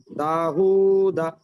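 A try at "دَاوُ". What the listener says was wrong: দা হু না, ওটা ওয়াও। ওয়াও উল্টো পেশ উ।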